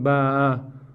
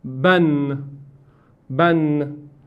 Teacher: Aparece un nun que está oculto. Entonces la nun se pronuncia, pero no se escribe. Entonces la fatha, doble fatha o tanvin significa una nun o una n que viene después de que se escribe con doble fatha. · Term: tanvin fatha